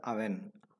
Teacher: In Malayalam it gets a slightly nasal sound